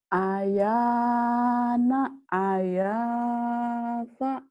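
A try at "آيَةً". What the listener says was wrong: Kan ayah panjang, Neng. Ini kan panjang.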